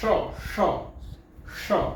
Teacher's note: ષ એટલે ટ ની લાઈનમાં તમારે બોલવાનું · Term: મૂર્ધન્ય ષ